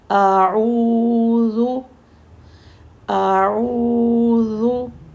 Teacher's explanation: پہلے حمزہ کی ایک حرکت کریں گے اور پھر عین کی دو حرکت کریں گے، پھر ذال کی ایک، سٹارٹ کے الف کی بھی ایک، پھر ذال کی بھی ایک، اور سینٹر میں جو عین ہے اس کی دو حرکت کریں گے۔